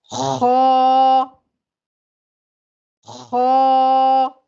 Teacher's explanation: خا کو موٹا ادا کرنے کا طریقہ کیا ہے کہ زبان کا جو اکثر حصہ ہے وہ تالو کی طرف اٹھ جاتا ہے، جس سے خا موٹا ادا ہوتا ہے۔ خا کو صحیح اور موٹا ادا کرنے کا طریقہ یہ ہے کہ منہ کا مضبوطی سے دائرہ بنائیں اور آواز کو اس کے مخرج میں اوپر کی طرف اٹھائیں۔ · اور یاد رکھیے گا خا میں خرخر کی جو آواز ہے باقی رہنی چاہیے۔ منہ کو فل اوپن کیجئے، کیونکہ ہمیں 1 الف کے برابر کھینچنا ہے اور موٹا ادا کرنا ہے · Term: موٹی آواز